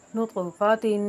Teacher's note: नुतफ़तिन में ता जो है, ता के नीचे हरकत तनवीन है, तो इसको गुन्ना करके यानी कि एक इफ़ा करके पढ़ेंगे